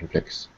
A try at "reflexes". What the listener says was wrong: Just be careful of the endings. Reflexes. Yeah, when you got an ES. And it's extra, if it's not normally part of the word, we have to say it as a separate syllable. So reflex ends with X, but plural, XES, is an extra syllable. Reflexes.